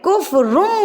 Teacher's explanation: تنوین اور نون ساکن کی ساؤنڈ کو میم میں بدل دینا ہے